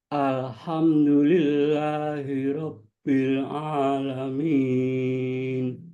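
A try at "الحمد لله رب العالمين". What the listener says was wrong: ketika membaca al ditahan satu harokat sejenak ditahan.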